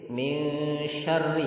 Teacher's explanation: ra itu tipis karena ada kasrah di bawahnya.